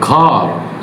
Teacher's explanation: the American realization involves a retroflex R, where the tongue tip curls up and back toward the hard palate, creating a growling quality that is very distinct in the modern Hollywood media.